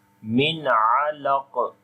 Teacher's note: on the qaf, you make again qalqala and heavy sound